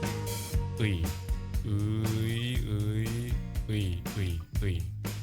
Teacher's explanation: Think of it as ㅡ plus ㅣ. Go from ㅡ to ㅣ and pronounce it as one syllable.